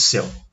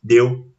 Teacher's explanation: o som, obviamente, ele é diferente por causa de uma vogal aberta e outra fechada